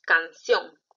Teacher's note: Canción tiene la mayor fuerza de voz en ción, entonces esa es la sílaba tónica. Está en la última sílaba.